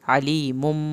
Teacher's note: کے برابر دے لگائیں، ہو الٹا پیش کو کھینچنا ہے، علیم، عین کو حلق سے پڑھیں، یا ساکن کو کھینچیں